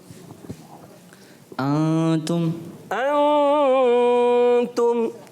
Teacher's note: थोड़ा सा गुन्ना, नाक में आवाज़ को घुमाना है